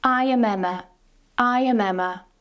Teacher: Here, it sounds more natural to use the weak form um, so we're using the schwa